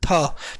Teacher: तो दंत्य, तो था बोलेंगे जब हम, था, तो था में आपकी जो जीभ है वो दांत में लगती है